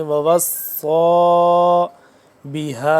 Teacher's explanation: صاد کھڑا زبر، صا موٹا کر کے پڑھیں گے، ووصا بہا، ہا الف مد زبر، ہا دو سے تین الف کے برابر اس مد کو لمبا کرتے ہیں۔